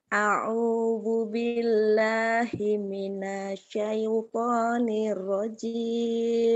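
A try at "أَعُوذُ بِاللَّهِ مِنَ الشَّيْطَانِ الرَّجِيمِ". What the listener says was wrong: Oh, soalnya nggak audu, awu kayak kedengarannya awu, audu atuh Audu.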